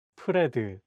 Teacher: In fact, there is no difference between pu and fu or bu and vu. Therefore, the pu and fu sounds are both pronounced as piup and bu and vu as biup.